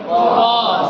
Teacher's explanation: ओष्ठ से होता है। जैसे प बोलिएगा तो प में दोनों ओष्ठ सटता है